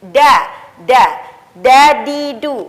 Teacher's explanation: Karena ketika dilafazkan dengan suara da, maka ujung lidah kita tidak bertemu dengan pangkal gigi seri atas, melainkan bertemu dengan gusi atau di atasnya, yaitu langit-langit. Da, di, du.